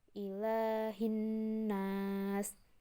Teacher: Alif lamnya tidak terbaca dan huruf setelah alif lam itu terdapat tanda baca tajwid sehingga dibaca lebur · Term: alif lam syamsiyah